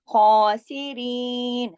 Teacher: खा के ऊपर खड़ी जबर है, जो कि एक अलिफ यानी 2 हरकत के बराबर खींची जाएगी, और खौ मोटा लफ्ज है